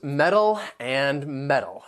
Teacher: it's going to end with that dark L that L you're not going to release it at the end